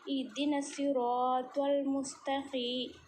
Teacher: تا زبان کی نوک کو سامنے کے دانتوں کی جڑ میں لگانے سے ادا ہوتا ہے۔ قاف زبان کی جڑ کو چھوٹی زبان کے پیچھے والے حصے کو لگانے سے ادا ہوتا ہے۔ یا ساکن سے پہلے زیر یا مدہ تھوڑا کھینچ کر پڑھیں گے۔